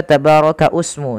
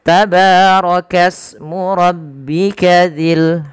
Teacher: tebal karena dia berharakat fathah ini tidak dibaca tabaraka usmu tapi langsung ke Sin karena di sini adanya hamzatul wasal yang tidak dibaca